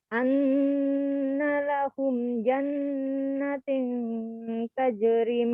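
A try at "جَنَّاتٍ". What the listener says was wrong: Panjangin. Jannah. Nanya panjang, ada fathah berdiri.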